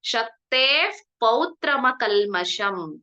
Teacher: ಶಕ್ತೇ ಉತ್ತಮ ಕಲ್ಮಶಂ ಶಕ್ತೇಫ್ ಅಲ್ಲಿ ವಿಸರ್ಗ ಇದೆ ಅಲ್ವಾ ಶಕ್ತೇಹೆ ಅಂತ ಇದೆ ಅದರ ಮುಂದಿನ ಅಕ್ಷರ ಪ ಇರೋದ್ರಿಂದ ನಾವಲ್ಲಿ ಎಫ್ ಸೌಂಡ್ ಫ ಸೌಂಡ್ ಎಫ್ ಸೌಂಡ್ ಬರಬೇಕು